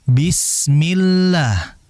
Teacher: adapun kalau ada lafzul jalalah kalimat Allah yang sebelumnya ada huruf berharokat kasrah, maka dibaca tipis. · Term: huruf lam